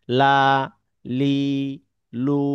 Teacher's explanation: লাম অক্ষরটি বৈশিষ্ট্যগত দিক থেকে হচ্ছে পাতলা। যেমন লা লি লু একটি তীক্্ণ ধ্বনি প্রদান করে।